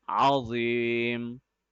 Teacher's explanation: On the letter Za, since Za is a heavy letter, we have to make sure that our lips are a little bit rounder and the A sound is coming out.